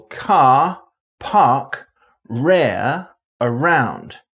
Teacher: accents from most of england and wales africa india australia and new zealand where the r only occurs before a vowel